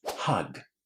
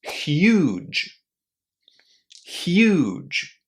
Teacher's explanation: This word is pronounced with u inside with a long oo there [clears throat] and it ends in j just as the beginning of the word just or jim.